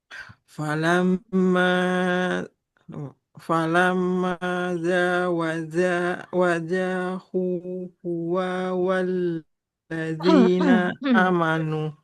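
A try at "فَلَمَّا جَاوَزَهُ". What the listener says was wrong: Panjang pendeknya hati-hati ya. Falam wazahu. Nah, yang panjang di sini haknya. Zainya nggak boleh panjang. Karena fathah tidak bertemu dengan alif.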